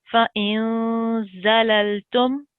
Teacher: So if it's not a ba or any of these 6 letters, then you need to do a 2-second light nasal sound